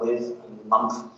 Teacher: There's TH fronting, so with, and month, which is something that London would do.